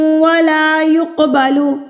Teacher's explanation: قاف ساکن پہ ہم نے قلقلہ کرنا ہے، یعنی کہ اس کو ہلا کے پڑھنا ہے، ترتراہٹ سے پڑھنا ہے، اپنے مخرج سے ٹکرا کے اس کی آواز واپس آئے گی